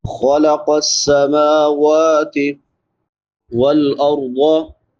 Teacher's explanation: را پر پڑھی جائے گی کیونکہ را ساکن ما قبل فتحہ یعنی زبر ہے۔ ضاد کو بھی پر پڑھیں گے، موٹے حروف میں سے ہے۔